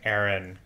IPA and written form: εɹɪn (Erin)